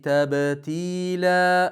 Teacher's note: va tabattal tada tashdid bor va lamni tebratmasligimiz kerak